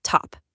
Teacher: These guys are pulling for everything to be simple and easy to say. You know, like dropping the S and stop to just say top. it's easier.